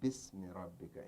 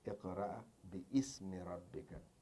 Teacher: now it's hamzatul wasl, you say bismi rabbika instead of say iqra bi ismi rabbika